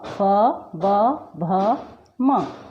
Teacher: मतलब हमारे होठ एक दूसरे से स्पर्श कर रहे हैं, इसलिए इन्हें ओष्ठव्य कहा जाता है।